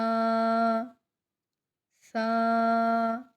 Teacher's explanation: سا کو نرمی سے ادا کریں گے، سا کے ساتھ سیٹی کی آواز نہیں آئے گی